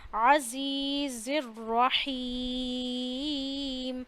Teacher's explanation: را کو موٹا کر لیجئے کیونکہ را پہ زبر ہے. ابھی میں نے بتایا تھا را پہ زبر یا پیش آئے, را ساکن سے پہلے زبر یا پیش آئے, را کو موٹا کرتے ہیں. · عین کا خیال رکھنا ہے, حمزہ نہیں ہونے دینا, اسے عین پڑھنا ہے